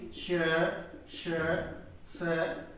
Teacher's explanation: इन्हें भी जो है अघोष व्यंजनों के अंतर्गत शामिल किया जाता है, क्योंकि जब हम इनका उच्चारण करते हैं तो स्वर तंत्री में कंपन नहीं होता